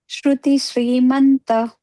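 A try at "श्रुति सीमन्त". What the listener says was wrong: It is not Srimanta, Simanta. Shruti Simanta.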